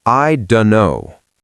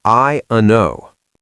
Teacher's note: >> I don't know is the most common phrase where illision happens. The T in don't is gone. The D in don't is almost gone. It's just vowels and nasals. I uno. Three sounds.